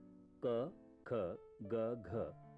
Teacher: क, ख, ग, घ कंठ से निकलने वाली ध्वनियां हैं।